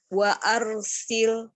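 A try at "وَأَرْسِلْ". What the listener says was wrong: Tebal sedikit lagi. Wa tipis.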